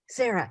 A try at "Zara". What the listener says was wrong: It's Zara. It begins with a Z.